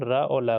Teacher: दंत मूल से, दंत के मूल से जड़ पे जीभ टकराते हुए यह हम रा और ला को बोलते हैं, उच्चारण करते हैं।